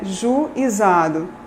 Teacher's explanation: Há falantes que produzem, que dizem juizado, produzindo hiato